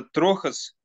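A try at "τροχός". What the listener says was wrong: Только, наверное, не трохос, а трохос. Там два слова есть. С ударением на последнем слоге. Ну, на первом с конца. Трохос.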